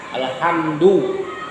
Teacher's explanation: Kalau ha di alhamdu itu wasatul halak namanya, tengah tenggorokan.